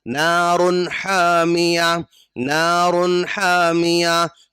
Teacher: تنوین کے بعد ہا رہا ہے، یہ ہا حروف حلقی میں سے ہے، تو یہاں پر بھی اظہار کریں گے، یعنی آواز کو نہیں چھپائیں گے، فوراً آگے بڑھ جائیں گے